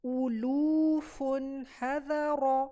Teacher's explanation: ہا اور ذا light letter ہیں، را ہیوی ہے تو اس کو ہیوی پڑھیں گے